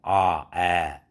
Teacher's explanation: 그런데 모음도 고모음이냐 중모음이냐 저모음이냐 따라서 저모음, 즉 턱이 밑으로 쫙 내려간, 그럼 입이 벌어졌다 소리죠.